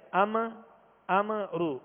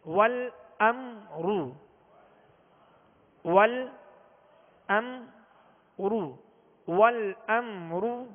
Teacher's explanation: غنہ بھی نہیں کریں گے اور اس کا سکون بھی کامل ادا کریں گے میم کا